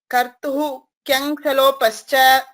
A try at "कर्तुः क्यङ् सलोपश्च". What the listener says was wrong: कर्तुः इति पूर्ण उच्चारणं नावश्यकं। कर्तुः क्यङ् सलोपश्च सलोपश्च तत्र सकारस्य श्रवणं मास्तु। सलोपश्च पश्च इति वदति चेत् सकारस्य श्रवणं भवति। वस्तुतः तत्र शकारः अस्ति, शिवशकारः, तालव्यशकारः। सलोपश्च सलोपश्च एवम् आगन्तव्यम्।